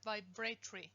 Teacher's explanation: if you look the word up in the dictionary vibratory that tr is not a cluster the r is syllabic when you have a syllabic r in the tr cluster that